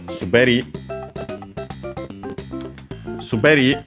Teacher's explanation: and by the way it's accented on the last syllable.